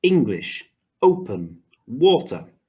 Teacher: they all have two syllables and the stress is on the first syllable